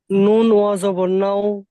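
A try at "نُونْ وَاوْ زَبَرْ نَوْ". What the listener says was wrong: পরিষ্কার বলেন। নুন, তাড়াতাড়ি করবেন না, তাড়াতাড়ি করবেন না। নুন যেমন তিন আলিফ টান দিয়ে পড়তে হয় সেরকম টান দিয়ে পড়বেন।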